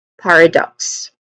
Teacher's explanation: the stress syllable is on the first syllable par · So it ends with a hissing sound in the end, which is the letter S sound.